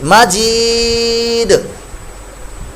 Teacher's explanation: वक्फ की सूरत में दाल साकिन पर कलकला भी होगा और वक्फ की सूरत में यहाँ पर मद्दे आरज भी पैदा होगी।